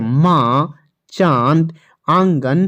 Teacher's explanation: हवा नाक और मुंह दोनों से निकलती है